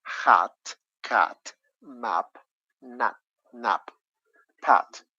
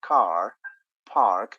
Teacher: i can speak about a short letter a sound as in hat cat map nap pat or i can give you a long a sound as in car park